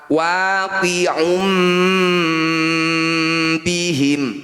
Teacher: Nun sukun atau tanwin, ini ya dhammah tanwin bertemu ba, disebut bacaan iqlab. Cara bacanya bunyi dhammah tanwin kita dengungkan 2 harokat. Saat dengung bibir kita posisinya rapat.